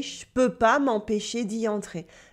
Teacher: The ne has disappeared. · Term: spoken French